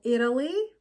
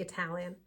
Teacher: between two vowel sounds in an unstressed syllable for example Italy the letter T is a flap T because it is located between two vowel sounds and in an unstressed syllables